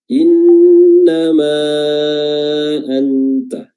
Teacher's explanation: innama di sini ada lagi nun tasdid ya, ditahan durasi tasdidnya karena dia huruf gunnah